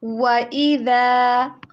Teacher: واؤ کو دونوں ہونٹوں کو گول کرتے ہوئے ادا کریں، ڈبلیو والی ساؤنڈ کے اوپر، وی والی ساؤنڈ کے اوپر نہیں